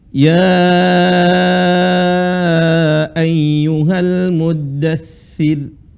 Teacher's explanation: di sini termasuk ro yang dibaca tipis karena huruf sebelumnya berharakat kasrah